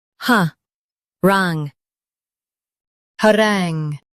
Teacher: Emphasize rangue and keep ha light.